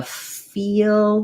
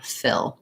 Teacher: We don't want that tense E sound. We want to have that relaxed I sound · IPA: /ɪ/